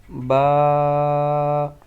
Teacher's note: با آپ کو جیسے کہ معلوم ہے کہ دونوں ہونٹوں کے تر حصے سے ادا ہوتا ہے۔ جب آپ کے دونوں ہونٹ گلے ہوں گے، تر ہوں گے، تب یہ با ادا ہوگا۔